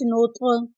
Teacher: यहाँ पर त्वा साकिन है, त्वा साकिन पर कलकला करेंगे।